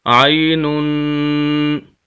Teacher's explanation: یہاں پر غنہ ہے، غنہ کہتے ہیں ناک میں آواز لے جانے کو، عینن۔ اگر ہم وقف کرنا چاہیں گے تو نون کو ہم ساکن کر دیں گے، اور اس کی جو حرکات 2 پیش ہیں اس کو ہم ختم کر دیں گے، تو وقف ہو جائے گا، لفظ ہوگا پھر عین، عین، اس طرح وقف ہو جائے گا۔